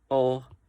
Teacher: a back closed mid, which is o